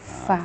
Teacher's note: Fa itu ada hembusan.